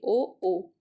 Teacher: ओ मतलब कंठोष्ठ का, जो हमारा कंठ है, और ओष्ठ, इन दोनों से आवाज निकल रही है।